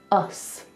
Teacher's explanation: like us together with an unvoiced S